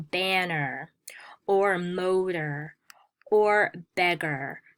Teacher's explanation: what they have in common is the final schwa plus r sound